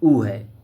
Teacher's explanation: ओष्ठ दीर्घ स्वर का उदाहरण है